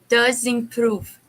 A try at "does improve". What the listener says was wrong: Yes, I would make a little, like in German, just a little bit of a does improve. So finish the Z sound of does improve.